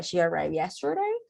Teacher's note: I need to rise the intonation, and then I am showing surprise.